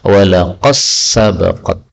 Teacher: tal ketemu sin ini boleh idgham menjadi walaqas sabaqat